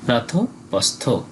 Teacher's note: রাতপস্থ এখানে দেখুন দন্তস থ রয়েছে কোন আকার স্বীকার নেই তাই দন্তস এর জন্য অর্ধেক ছ উচ্চারিত হয়েছে এবং পরে থ টা পুরো হয়েছে